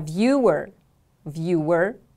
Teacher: a television program a viewer viewer repeat after me please viewer the stress is on the first syllable